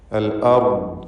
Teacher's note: ആലിഹതൻ മിനൽ അർദ്, അൽ അർദ് റാഇനും ദ്വാദിനും തഫ്ഖീമാണ്. റാ സാക്കിനത്തായ റാ തൊട്ട് മുമ്പിൽ ഫത്ഹുമാണ്. അതുകൊണ്ട് റാഇന് തഫ്ഖീം കൊടുക്കണം, തടിപ്പിച്ച് റാഇന് ഉച്ചരിക്കണം.